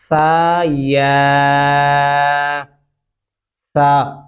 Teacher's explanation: सा जो दांतो के नीचे जबान लाकर पढ़ते हैं नरमी से